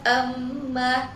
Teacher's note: karena huruf mim yang bertasydid dan cara membacanya itu dengan dengung selama dua harakat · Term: ghunah musyadadah